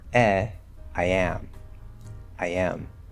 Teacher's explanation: there's going to be a small y linking the diphthong I and the a